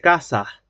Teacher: en lugar de decir casas, con S al final se dice casa. Aspirada la S al final. Casas. Como una J al final, como si hubiera una J.